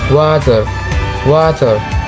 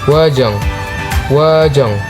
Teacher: bibir membulat sedikit, suara mengalir lembut tanpa gesekan